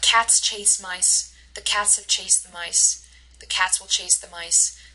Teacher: Notice how cats, chase, and mice always get the stress.